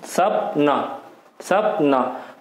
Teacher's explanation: जीभ क्या हमारे दांतों के मसूड़ों को स्पर्श कर रही है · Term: दंतमूली